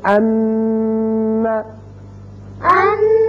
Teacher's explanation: یہ جو تھوڑی دیر کے لیے آواز ناک میں رکی ہے یہی غنہ ہے